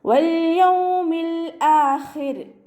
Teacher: ലാമ് കൊൽക്കല ലെറ്റർ അല്ലാത്തത് കൊണ്ട് ഹാഫ് സുക്കൂന് കൊടുക്കുക. അടുത്ത ലാമിനും ഹാഫ് സുക്കൂന് കൊടുത്തിട്ട് ഉച്ചരിക്കുക കേട്ടോ.